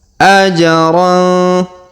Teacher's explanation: Perhatikan huruf ja berharakat sukun, maka kita pantulkan atau kita qalqalahkan. Ajra. Kemudian tanwin an pada huruf ron bertemu dengan huruf fa, maka kita dengungkan dan kita samarkan.